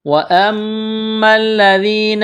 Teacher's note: میم مشدد ہے، غنہ کریں گے، آواز ناک میں چھپائیں گے